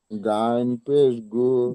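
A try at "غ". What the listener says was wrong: গাইন হবে না ভাই, গইন, গইন। জি দেখেন, গাইন পড়বেন না জি ভাই, গইন পড়বেন না কেউ, গাইন, গাইন পড়বেন না কেউ, গইন পড়বেন। জি, আপনি পড়ছেন গাইন। গইন পেশ গু, গইন।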